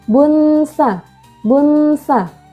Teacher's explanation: domah tanwin bertemu dengan huruf tsa dibaca samar dan berdengung